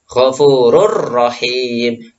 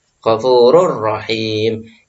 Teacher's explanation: Enggak mendengung ghafurur rahim karena ada tanwin bertemu dengan huruf idgham bil ghunna yaitu ra. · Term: idgham bila ghunna